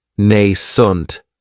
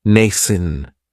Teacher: Another great adjective is nascent, and this word has 2 syllables, and the stress is on that first syllable. It has the long A sound, nascent. That second syllable has that schwa, nascent.